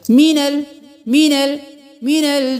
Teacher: सबको जल्दी जल्दी अदा करें सिर्फ नून पे देर लगाएं